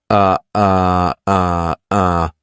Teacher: It's just neutral. Nothing happens with the mouth. Nothing happens with the tongue. Uh, in a standard English dialect, this sentence would sound a little something like this. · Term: schwah